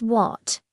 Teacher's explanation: It has a third tone, so your voice should dip down and then rise up.